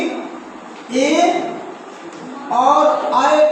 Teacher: जैसे हम लोग बात करते हैं कि ए और अय का उच्चारण कहाँ से होता है, तो इनका उच्चारण कंठ और तालु के संयोग से होता है